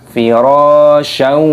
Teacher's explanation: Sya ada fathah tanwinnya pertemuan dengan huruf wawu, ini hukumnya dibaca idgham bi gunnah, dimasukkan dan disertai berdengung.